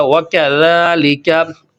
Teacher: یہ ہماری زبان جو ہے نا، یہ اوپر والے جو سامنے والے دو دانت ہیں، سامنے والے دو دانت، یہ ان کے اوپر لگے گی، تو اس کا تلفظ جو ہے وہ ادا ہو جائے گا۔ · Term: ذال